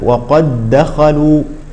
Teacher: المثال الآخر، وقد دخلوا، إذا نلاحظ أن الدال الأولى أدغمت في الدال الثانية، فهذا النوع من الدالات لا يقلقل، فلا نقول مثلا وقد دخلوا، لا، الدال الأولى تدغم في الثانية، وقد دخلوا، نقول هكذا وقد دخلوا.